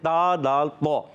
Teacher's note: تکذبان میں تا پر پیش ہے، تا کا مخرج زبان کا سرا اوپر کے دانتوں کی جڑوں سے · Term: حروف نطعیہ